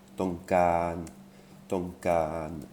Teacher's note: Ah, vous remarquerez que j'ai mis 2 fois le A parce qu'il y a des voyelles longues dans la langue thaï. Donc là, pour vous donner un petit repère facile, il y a 2 fois le A, c'est une voyelle longue. Tonkan. Et puis vous voyez que aussi j'ai mis un petit chapeau sur le O.